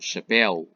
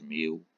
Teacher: Os ditongos também podem ser abertos, chapéu, ou fechados, meu.